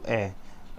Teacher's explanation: ए बोलते हैं तो हमारा जो ओंठ है वो फैलता है, और ये जो स्वर है वो आगे से निकलता है, मुंह के आगे से, तो इसे बोला जाता है अग्र स्वर।